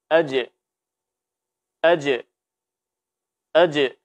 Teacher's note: pada saat sukun ya dibaca dengan dipantulkan Qalqalah